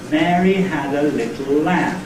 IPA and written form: ˈmeəri ˈhæd ə ˈlɪtl̩ ˈlæm (Mary had a little lamb)